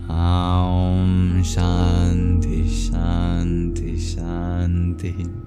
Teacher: The O of the Om and the A of the Shanti. These are long, literally in terms of vowel length.